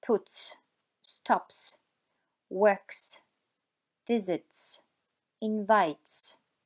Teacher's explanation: la pronunciación de la terminación S será sorda